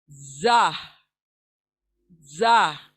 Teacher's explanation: जबान की नोक ऊपर नीचे के दांत जब आपस में मिले तब अदा होगा, जा, जा। और ये सख्ती के साथ अदा हो रहा है, सख्ती के साथ, इट्स नॉट सॉफ्ट, सख्ती से इसको अदा करना है, जा, जा।